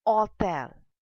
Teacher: in French, it is hôtel because H is silent in French language. Hence, when you have H, you keep it a little silent ash.